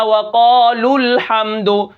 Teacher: یہاں پر واو مدہ حذف ہو گیا، غائب ہو گیا